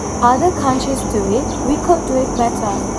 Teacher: In BBC English, stress falls on other countries do and better with a rising intonation on do it and a fall on better. · the original accent influenced by South African English stresses all content words, especially better, which is delivered more forcefully.